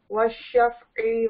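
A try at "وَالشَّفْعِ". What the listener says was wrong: वश्शफ़ई नहीं कहेंगे, वश्शफ़ई वल वत्र। नहीं, शफ़ई आइन को ना थोड़ा सा आपने लंबा कर दिया ना, शफ़ई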